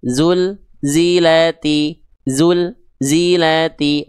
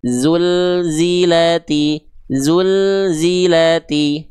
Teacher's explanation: Nah lamnya jangan sampai terputus tapi el-nya ngalir sedikit.